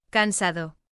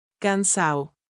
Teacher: In both dialects, it tends to soften to De, like in nada becoming, nada. but in Caribbean Spanish, the D is often dropped completely